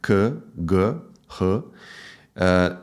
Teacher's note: velar phonemes pronounced at the back of the mouth